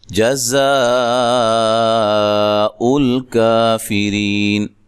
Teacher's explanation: جیم کو لمبا نہیں کرنا، زا کو زور سے ادا کرنا ہے، سیٹی سے ادا کرنا ہے، اور یہ جو مد ہے یہ مد واجب ہے، حروف مدہ کے بعد حمزہ اسی کلمہ میں ہو اس کو مد واجب کہتے ہیں۔